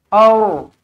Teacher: Jawapannya kita kena tengok huruf sebelumnya berbaris apa. Apabila huruf sebelumnya berbaris atas, maka ra yang bertanda mati ini kita baca dia dengan tebal, tafkhim · bila huruf ra tebal kita baca dengan aur, bukan ar.